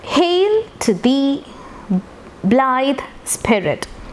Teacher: Trochaic, it follows like this: a stressed syllable followed by unstressed. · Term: trochaic trimeter